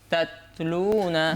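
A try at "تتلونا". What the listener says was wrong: বাতাস জারি হয়নি, তাতলুনা।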